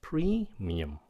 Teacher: Nó là premium. Các bạn nhấn âm đầu xong rồi xuống giọng. Premium, okay?